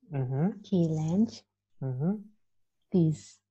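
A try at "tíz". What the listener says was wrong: tiz, bukan s tapi tiz.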